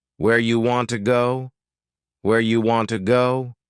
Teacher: You becomes ya, and want to becomes wanna. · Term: reduction